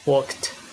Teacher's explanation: When the past tense morpheme follows a voiceless sound, we got t.